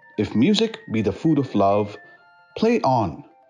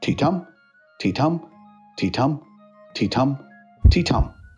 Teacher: That line has five stressed and unstressed syllables. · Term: iambic pentameter